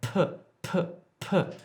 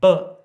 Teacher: you can actually feel the air hit your hand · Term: aspirated consonants